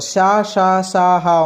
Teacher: ఇవన్నీ కూడా ఉష్ అని గాలితో అంటే మనం గాలి బయటకు వదులుతూ పలికే పదాలు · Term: ఉష్మాలు